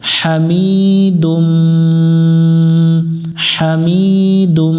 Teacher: মিমের উপর এখানে তাসদিদ আছে এটা গুন্না করতে হবে এটা ওয়াজিব গুন্না